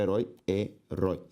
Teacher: Sílaba tônica de herói, rói